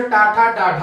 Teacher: तो मूर्धा उच्चारण स्थान से टा, ठा, डा, ढा होता है।